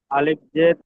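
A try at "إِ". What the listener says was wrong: আলিফ নয়, হামজা পড়বেন। আলিফ পড়বেন না, হামজা পড়বেন। আলিফ সর্বদা খালি থাকে। আলিফের সাথে কোনো কিছু র‍্যাট হয়ে গেলে, জাবার কিংবা জের কিংবা পেশ এসে গেলে আলিফটি হামজা পড়তে হয়। তো এখানে হামজা বলেন, হামজা জের ই।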